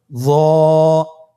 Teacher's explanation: জিহ্বার আগা, সামনের উপরের 2 দাঁতের আগার সঙ্গে লাগিয়ে উচ্চারিত। · হরফটি হলো মোটা হরফ, বারিক করে পড়া যাবে না এবং হরফটি উচ্চারণ করার সময় অবশ্যই 1 আলিফ টেনে পড়তে হবে।